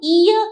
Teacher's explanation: वचन का व ओष्ठ्य और दंतोष्ठ था, लेकिन जब हम ईय कहते हैं हैं तो पूरी तरह से जिह्वा जो है वो तालु की तरफ ऊपर उठती है, इसलिए ऑप्शन नंबर बी तालव्य य का उच्चारण स्थान माना जाता है।